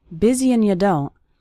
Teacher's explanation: that's very common for the word and to get reduced to just an n Sound